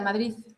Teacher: Bueno, según yo es una D, pero claro, puede Puede ser ser de una D bloqueada o a veces también hay gente que pronuncia una Z